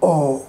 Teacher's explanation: between half close and half open back part of the tongue and while producing our lips are rounded